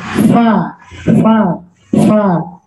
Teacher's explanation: Fa itu makrosnya gigi atas bertemu dengan perut bibir bawah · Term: huruf fa